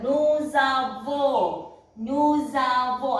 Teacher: this S will be pronounced if it is followed by a vowel, and it will pronounce together.